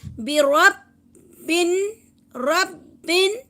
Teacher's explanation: را با اور نون تینوں کو جو ہے وہ ملا کر چلیں گے ہم